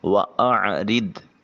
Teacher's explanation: عین پہ عین کی آواز کو حلق سے نکالیں گے، را کے نیچے زیر ہے بریک ادا کریں گے۔